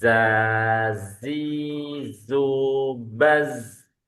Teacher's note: yang runcing lidah ini tiga-tiganya ada ee sifat khususnya safir tajam